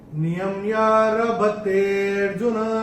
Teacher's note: ते को थोड़ा सा खींच के बोलेंगे।